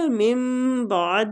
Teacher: ادھر اقلاب ہو رہا ہے، نون ساکنہ کے بعد با آ رہا ہے تو ہم میم کو میم کے ساتھ ملا کے پڑھیں گے،